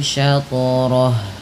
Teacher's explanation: pantulkan lagi pada lafal syatrah karena ia bacaan qalqalah